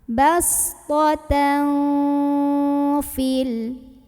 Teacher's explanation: Karena ada tanwin fathah bertemu dengan huruf fa. Maka cara membunyikan tanwinnya itu bukan jelas N, bastotan bukan, melainkan samar-samar mau bilang fa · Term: ikhfa hakiki